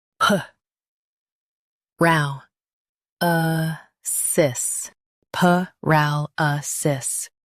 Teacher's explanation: Stress ra and keep p soft.